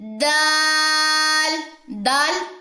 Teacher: دول دو موٹا نہیں کرنا، یہ باریک لیٹر ہے